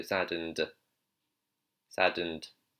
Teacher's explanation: So the d, you don't want to do d, it's d. So your tongue is actually hitting the front, just behind your front two teeth.